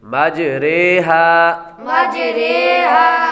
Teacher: یہ دوسرا جز ہم نے امالہ پڑھا تھا، یہ اس کی وضاحت ہے کہ یہاں پر را کھڑا زیر ری نہیں بلکہ اردو کے لفظ قطرے کی را کی طرح پڑھیں گے، را امالہ والی رے، مج رے ہا۔